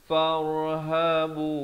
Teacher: Ya nak ke far jangan lambat, dan bila masuk fa baris atas bertemu ra, di sini ra-nya dibaca tebal.